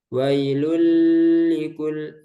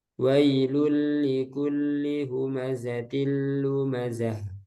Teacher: ini sempurna masuknya langsung ke lam tanpa tambahan guna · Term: Idgham Bila guna